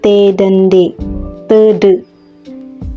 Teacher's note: gusi sehingga udara yang dihembuskan dari paru-paru terhambat untuk beberapa saat ujung lidah yang menekan rapat pada gusi itu kemudian secara tiba tiba dilepaskan terjadilah letupan udara keluar dari rongga mulut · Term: konsonan hambat letup apiko alveolar